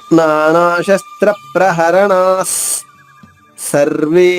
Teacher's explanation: ముందు వస్తుంది అని తర్వాత నాలుగో చరణంలో మొదటి అక్షరం స ఉంది కాబట్టి ఇక్కడ విసర్గ ఉచ్చారణ స పొల్లుగా వస్తుంది